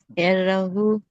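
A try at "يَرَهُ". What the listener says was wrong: రాకు ఒత్తు లేదు. ఎర హాకు దీర్ఘం ఉంది. యరహు.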